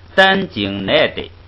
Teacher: 这个奈是读那个四声，单经奈的。不是那个三声，不是三声。